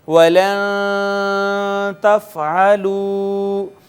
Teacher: وَلَن تَفْعَلُوا، یہاں پہ آپ دیکھیں یہ نون ساکن آیا، اور نون ساکن کے بعد کوئی حرف اظہار نہیں ہے حروف حلقی میں سے، لہٰذا یہاں پر اخفا ہوگا